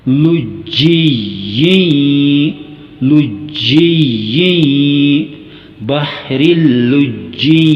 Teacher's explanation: یہاں پہ ایک زیر کٹ نہیں جائے گی بلکہ پڑھیں گے دونوں زیر، یعنی پوری تنوین پڑھی جائے گی، اور اس تنوین کی آواز میں جو ساکن نون کی آواز پیدا ہوتی ہے، یعنی نون کی ساکن جو آواز پیدا ہوتی ہے، اس آواز میں گنگناہٹ پیدا کریں گے، اسی کو ہی غنہ کہا جاتا ہے۔